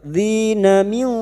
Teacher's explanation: nun sukun bertemu kaf, ikfa hakiki, kita samarkan bunyi nun sukun dan mendengung selama 3 harakat